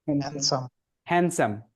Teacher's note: ড সাউন্ড বাদ হয়ে গেল, হয়ে যাবে কি হ্যান্ডসাম